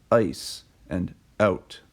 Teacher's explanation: an example of this from English is Canadian raising where the diphthongs I and owl are pronounced with a higher beginning before voiceless consonants